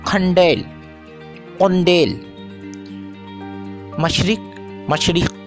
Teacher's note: قاف کبھی کھ اور کبھی کاف میں بدل جاتا ہے۔